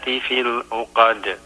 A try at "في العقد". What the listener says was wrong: في العقد, if you can pronounce the ayn more clearly.